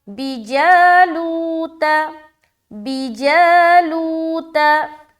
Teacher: इसमें जा में खींचना है और लू में खींचना है, बाकी बा को बग़ैर खींचे अदा करेंगे और ता को भी बग़ैर खींचे अदा करेंगे